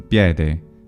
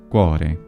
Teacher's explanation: certain vowels get broken into something that usually are called diphthongs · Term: vowel breaking